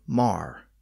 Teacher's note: the vowel in the word more was rendered with a letter A indicating a less rounded sound